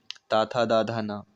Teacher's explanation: ता वर्ग में दांतों में स्पर्श होता है